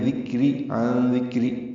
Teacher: عن ذکر میں نون ساکن کے بعد دال آنے کی وجہ سے اخفا ہے، نون کی آواز چھپائیں گے